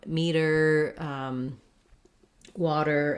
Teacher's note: in american english this t sounds a little more like a d it's a flap it's between two vowels